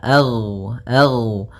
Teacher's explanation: ghain termasuk salah satu sifat huruf yang dia adalah sifat rakhawah yang di mana suaranya mengalir. Ag.